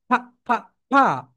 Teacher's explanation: উপরের দাঁত নিচের ঠোঁটের সঙ্গে টাচ করবে